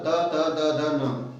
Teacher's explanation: फिर प्रश्न आता है त वर्ग त थ द ध न, सारे त वर्ग का उच्चारण स्थान दंत से होता है अर्थात दांत की सहायता से होता है